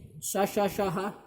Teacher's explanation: देखिए पहली बात तो याद रखेंगे कि ये शा शा शाह जो ऊष्म और संघर्षी व्यंजन है, ये सभी अघोष हैं और इनको बोलने में ज़्यादा हवा मुख से निकलती है, इसलिए ये सभी महाप्राण है